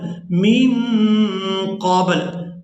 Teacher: یہاں وقف کی صورت میں لام کو ساکن کر دیں گے